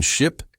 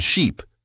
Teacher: Ship has a short vowel, I, as in sit. Sheep has a long vowel, E, as in see.